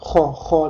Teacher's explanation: Ya'ni xo harfi xo deb talaffuz qilganimizda bo'g'zimizning eng yuqori qismida hosil bo'ladi bu tovush hamda tomog'imizni biroz qirib o'tadi.